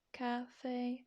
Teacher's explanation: so it doesn't go up doesn't go down it's just straight melodic across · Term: first tone